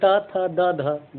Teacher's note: जीभ कहाँ टकरा रही है? दांत में, तो दंत है।